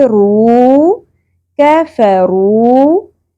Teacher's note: رو پیش واو ساکن حرف مدہ ایک الف کے برابر کھینچیں گے